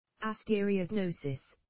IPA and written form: əˌstɛrɪəʊˈɡnəʊsɪs (astereognosis)